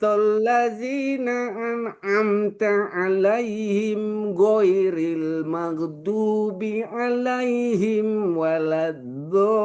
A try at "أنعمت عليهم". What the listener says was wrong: An'amta. Tanya harus jelas. Ya, jangan langsung lengket ke ain dia. Jadi kalau lengket begini dia. An'amta alaihim. Hamzah dulu. Nun baru ain.